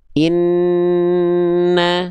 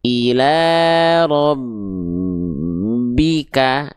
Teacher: kalau huruf nun dan mim itu dia ada dengungnya dulu baru keluar vokalnya. Jadi bukan cuman ditekan, tapi menunaikan makhraj masing-masing dari huruf nun dan mim in.